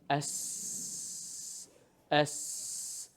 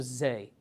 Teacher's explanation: the sin and the Z actually have the same place of articulation